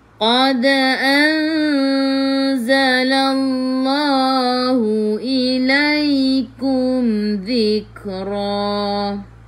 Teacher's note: Qad qaqiqu tebal. Qad qalqalah surah lantunannya kecil. Terus sambung.